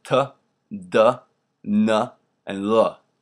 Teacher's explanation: So you put your tongue either behind the top of your teeth or in the teeth exactly. So like for L, it would actually work to just put it in between.